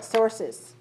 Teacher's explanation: many sources it has two syllables one syllable and two syllables you should be able to feel and hear perceive that one extra syllable is added when you make the plural